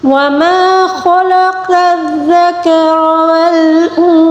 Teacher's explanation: خا کو پر پڑھیں گے، قاف کو بھی پر پڑھیں گے لیکن زال کو نرمی سے پڑھیں گے، ٹھیک ہے؟